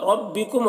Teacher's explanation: रा को पूर पढ़ेंगे, रा के ऊपर ज़बर है